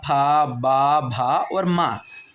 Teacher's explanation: जब आप इन ध्वनियों को बोलेंगे, इन व्यंजनों को बोलेंगे, इन वर्णों को बोलेंगे, तो ये हमारे होंठों को छू करके निकलेंगे। ये हमारी जो वायु है, मुख की वायु, वो हमारे होंठों को छू करके निकलेगी।